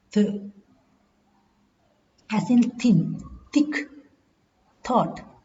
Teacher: Th is a voiceless dental fricative.